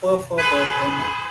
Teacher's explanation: अगर हम उच्चारण करने लगे तो ओष्ठ जो है, हमारे ओठ जो है वो हिलते हैं, वो अपनी जगह छोड़ते हैं। प फ ब भ म, ओठों को एक दूसरे के साथ विलग होना, ये क्रिया इसमें रहती है, इसीलिए ये ओष्ठ वर्ण है